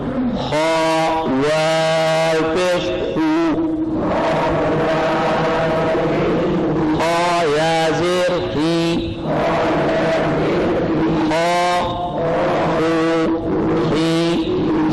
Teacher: خا کو موٹا تو پڑھیں گے لیکن گول نہ ہو.